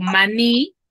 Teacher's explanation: Tiene la mayor fuerza de voz en la última sílaba. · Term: agudas